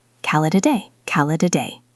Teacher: It connects together. Call it a day. It almost sounds like one long word.